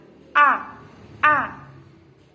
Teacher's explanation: Hamzah yaitu makhrajnya pangkal tenggorokan, jelas, mangap. A. Tidak boleh ada dengung.